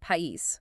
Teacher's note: Take the word país, meaning country. You can hear that clear separation between the A and the I · Instead of blending together, 2 vowels stand apart and they create 2 separate syllables. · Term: hiatus